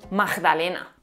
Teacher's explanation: Se suele pronunciar la G implosiva como J.